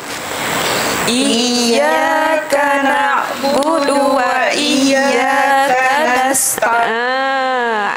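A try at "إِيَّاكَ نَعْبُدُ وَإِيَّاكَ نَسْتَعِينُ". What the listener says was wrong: Ada tasydid wa iyya situ Lagi sekali. na'budu wa iyyaka nasta'in. Okey, huruf ta dekat mana tempat dia? Hujung lidah. Di belakang gigi. Atas. Ta. Jangan tekan kuat-kuat sangat.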